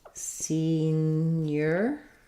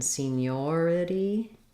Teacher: senior first syllable stress seniority second syllable stress